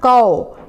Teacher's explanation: आओ की मात्रा का उच्चारण थोड़ा लंबा खींच कर किया जाता है, जैसे क में आओ की मात्रा कौ।